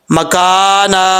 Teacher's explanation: اگر آپ ملا کے نہیں پڑھتے، یہاں پہ سٹاپ کرنا چاہتے ہیں، وقف کرنا چاہتے ہیں، تو اس صورت میں الف جو ہے یعنی 1 زبر کو الف سے بدل دیں گے، الف پڑھا جائے گا